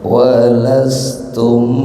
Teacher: Jadi tum itu karena mim sukun bertemu ba, bacaan ikhfa syafawi. Jadi cara bacanya didengungkan.